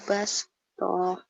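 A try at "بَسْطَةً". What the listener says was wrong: Bastah, nggak ada yang panjang. Bastah.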